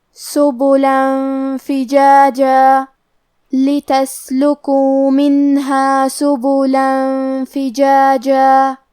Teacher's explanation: کیونکہ لام پہ تنوین زبر ہے، پھر حرف الفا ہے، کلمت فجاجہ فا حروف الاخفاء میں سے ہے اور اخفاء کا معنی ہے چھپا دینا، تو ہم یہ تنوین کو چھپاتے ہوئے اور غنہ کے ساتھ یہ حکم کو ادا کریں گے